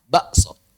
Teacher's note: Orang Jawa ngomong bakso pakai hamzah